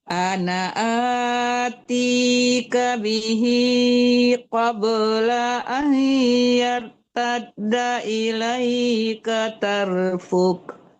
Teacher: Matikan kafnya, jangan dipanjangkan fu-nya ya.